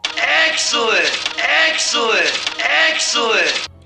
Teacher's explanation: that's a lower dress vowel